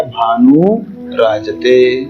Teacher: विसर्ग से पहले उ है और विसर्ग के बाद में र, तो विसर्ग का हो जाएगा लोप और उ जो है वह बड़ा हो जाएगा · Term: विसर्ग का लोप